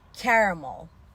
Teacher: yani e ke diğer heceler vurgusuz Şiva sesiyle okuyoruz ramel ramel bir de orada Amerikan r'si var dil hafif geride